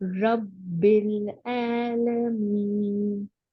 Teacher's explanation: تو الحمد للہ رب العالمین, پھر پڑھے الحمد للہ رب العالمین. اس میں با کو جماؤ دے کے پڑھیں, رب با سنائی دینا چاہیے